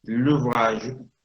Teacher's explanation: La E del francés, una E muy débil, desaparece de la oralidad automáticamente para facilitar la fonética al hablante. L'ouvrage, la palabra que recién citaron, bien, en lugar de decir le ouvrage, l'ouvrage, se dice directamente.